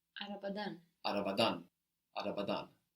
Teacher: And the ending will take the accent.